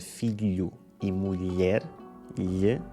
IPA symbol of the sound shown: ʎ